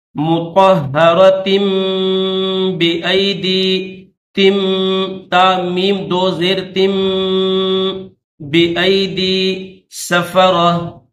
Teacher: تنوین کے بعد اگر با آ جائے تو پھر اس تنوین کو چھوٹی میم کے ساتھ پہلے ایڈ کریں گے، پھر میم کو با کے ساتھ ایڈ کریں گے